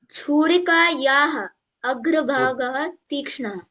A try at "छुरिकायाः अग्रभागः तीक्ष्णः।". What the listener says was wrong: बहु सम्यक, बहु सम्यक।